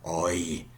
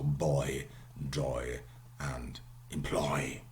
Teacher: start in the back and you put your tongue front